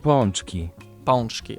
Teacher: the sound represented by A is not a nasal A, but rather nasal O